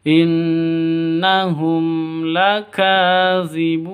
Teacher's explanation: Ka panjang 2 ketukan karena ada tanda berdiri di atasnya, mad asli. Zibun panjang boleh 2, boleh 4, boleh 6 ketukan, mad arid li sukun.